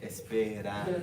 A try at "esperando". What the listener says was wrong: Yo, your R's in Spanish, they need work.